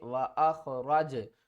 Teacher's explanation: جیم ساکن ہے قلقلہ کریں گے